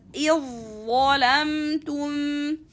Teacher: So when we have dhal sakina followed by dha, the Arabs used to make them easier and make them easy by inserting both letters together and read them as a one ظا mushaddad letter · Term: insertion